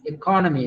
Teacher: The stress is on the second syllable.